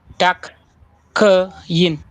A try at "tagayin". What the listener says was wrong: No, not takayin. Tagayin. So what happened here is that when you are having a vowel sound here, like a yin, and then you have such a word with this one, it sounds like a G.